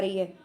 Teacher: बिल्कुल कंठ में से उसकी आवाज होके आ रही है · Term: पश्च स्वर